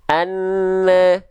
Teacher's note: Makhraj nunnya turun, sedangkan huruf berikutnya setelah nun sukunnya nggak langsung kita lafalkan. Akhirnya ada jeda di sana, turun lidahnya, ada bunyi ne ketika turun lidah dari huruf nunnya.